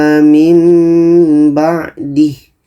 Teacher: Dan ini mim yang tangkainya ke bawah maksudnya adalah ini tanda iklab. Nun mati bertemu ba, hukumnya iklab, kita dengungkan 2 harakat. Dan bunyi nun ini kita tukar kepada mim.